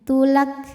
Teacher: Kafnya ini secara suara sifatnya syiddah, jadi ada suara yang kuat, tulak, tapi dipermudah dengan adanya sifat lain dari segi angin yaitu keluar angin. Jadi setelah huruf ka ada anginnya